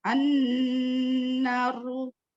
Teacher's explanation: Dari ujung lidah sedikit di bawah makhraj lam dan sejajar dengan daging gigi atas keluar satu huruf, yaitu huruf nun.